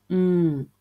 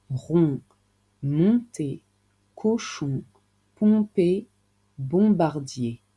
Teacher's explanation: Pain h Pour produire cette voyelle qui est la plus nasale des quatre, il faut partir de la lettre O puis faire vibrer davantage le nez. O, l'air sort un peu du nez.